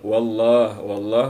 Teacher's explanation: Fatah ketemu Allah maka dibaca tebal lafdzul jalalah nya kata Allahnya dibaca tebal membaca tebal lafdzul jalalah